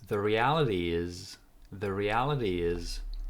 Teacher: there is connection between reality and is, and the intonation goes up